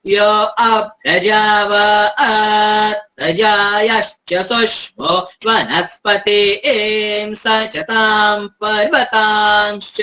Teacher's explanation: यहाँ पे जो अनुस्वारम का उच्चारण है वो म हमें चांट करना है।